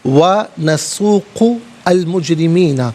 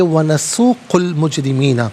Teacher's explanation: وَنَسُوقُ المجرمین، نسوق میں قاف پر پیش ہے، اس سے المجرمین میں کلام ساکن کے ساتھ ملائیں گے، درمیان میں سے الف یعنی حمزہ کو حذف کیا جائے گا، ہم پڑھیں گے وَنَسُوقُ المجرمین۔